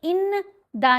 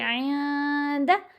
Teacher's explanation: اس میں غنہ خفیف ہوتا ہے اور نون کی آواز کو ناک میں چھپا کر پڑھا جاتا ہے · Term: احفا